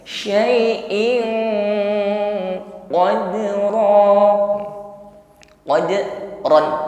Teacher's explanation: berhadapan dengan Q di sini ikhfa tepatnya tingkatan ikhfanya Adna yaitu ikhfa yang bunyi dengungnya itu lebih lebih dominan